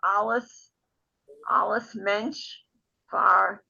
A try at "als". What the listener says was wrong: No, it's not alles, It's als. als Mensch verstellt.